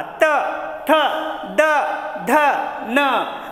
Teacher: म्हणजे जिभेचा स्पर्श दाताला होतो म्हणून याचं उच्चारस्थान काय आहे, दंत्य.